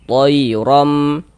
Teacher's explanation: dibaca takkhim dibaca tebal. Sehingga pangkal lidah kita naik terangkat ke atas.